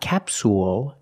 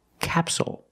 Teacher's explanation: the stress is on the first syllable so the second syllable is short it's not capsule it's capsule with a dark L at the